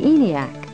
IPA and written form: ɛniæk (ENIAC)